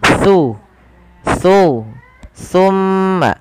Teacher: itu adalah huruf t Bagaimana pelafalan huruf t huruf t ini tempat keluarnya adalah ujung lidah bertemu dengan gigi seri atas jadi ketika kita melafalkan t pertemukan antara lidah kita ujung lidah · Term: huruf sa